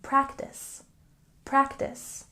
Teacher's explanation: we can check our pronunciation here with a stress on the first syllable in practice